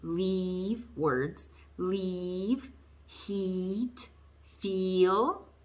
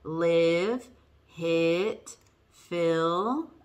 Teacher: tongue's a little bit tighter and you're smiling whereas with a your tongue is still in the front and it's high but it's a little bit looser and it's not so tense and with it it goes a little bit down okay so